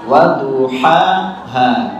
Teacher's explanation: Duhaha, jangan disamaratakan, jangan duhaha atau duhaha semua, tapi waduhaha ya. Yang pertama adalah ha kecil, kemudian yang kedua adalah ha tebal.